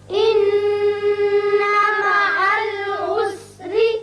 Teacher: نون مشدد ہے، غنہ کریں گے، یہاں را باریک ہوگا۔